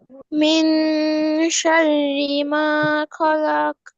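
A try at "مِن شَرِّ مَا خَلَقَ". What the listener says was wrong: মাশাল্লাহ সুন্দর হয়েছে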